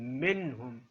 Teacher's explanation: جب بھی حروف حلقی کا کوئی حرف آ جائے گا وہاں پر اخفا کی آواز پیدا نہیں ہوگی، نون کو پورا پڑھنا ہے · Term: اظہار حلقی